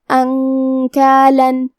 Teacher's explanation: کلمت انکالن میں یہاں نون ساکن ہے، پھر حرف الکاف آتا ہے، کاف حروف الاخفاء میں سے ہے تو ہم یہ حکم کو غنہ کے ساتھ ادا کریں گے